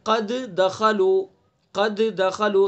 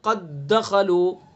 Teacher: تو ادغام کریں گے تو دال کا دال میں ادغام ہو جائے گا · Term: ادغام مثلین